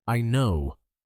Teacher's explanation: She says I know with a quick rise in tone.